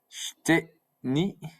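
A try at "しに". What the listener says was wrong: Not shiteni, but shini.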